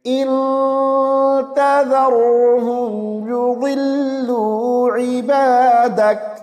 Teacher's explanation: را کو موٹی آواز سے پڑھیں گے